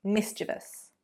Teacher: So the syllable stress is on the first.